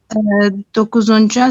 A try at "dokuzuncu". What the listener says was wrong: उसको डिफरेंट उसमें कर रही हैं प्रोनाउंस, आल्तंजू होता है, आल्तंजा बोला आपने, यहाँ पे भी दोकुजुंजू होता है, दोकुजुंजा बोला है। हाँ, दोकुजुंजू है और आल्तंजू है, इनके अंदर हम वे वावल हार्मनी फॉलो करते हैं।